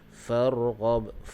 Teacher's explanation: huruf ba di hujung dia, kita waqaf dengan qalqalah kubra